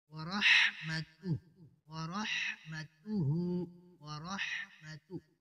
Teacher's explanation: حا وسط حلق سے ادا ہوتا ہے